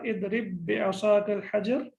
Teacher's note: there will be no qalqala on that because it is mudgham. There is no qalqala.